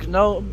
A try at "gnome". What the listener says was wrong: By the way, the G silent.